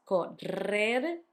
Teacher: You had the double R between the two vowels, correr, hard, and the soft one at the end